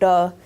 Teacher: of closure so in the case of duh that's the tongue tongue hitting the alveolar Ridge and it's staying there for some period of time and during that time all this air is flowing through here